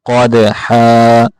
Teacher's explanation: قاف موٹا کریں گے، دال کے اوپر کلکلا کریں گے